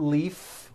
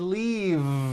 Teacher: leaf with an unvoiced F I should have said leave with a voiced V sound